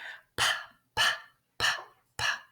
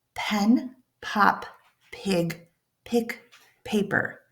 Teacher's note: We're going to take our lips and we're going to put them together. And then we're going to release with a puff of air. P-p. We're not making any noise. · We're not making any noise. No vocal cord vibration.